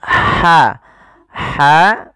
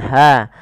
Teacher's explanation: huruf ha yang kecil itu dikeluarkan dari tenggorokan tengah tengah tenggorokan